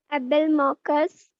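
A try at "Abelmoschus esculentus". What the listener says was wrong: मॉकस नहीं रे, एबेलमॉशस एस्क्युलेंटस, correct, it is the ओकरा या भिंडी, एंड इसके जो फ्रूट्स होते हैं we have seen these are commonly used as vegetables. तो ये भी याद रखना है कि एबेलमॉशस एस्क्युलेंटस ओकरा या भिंडी बिलोंग्स टू मालवेसी फैमिली।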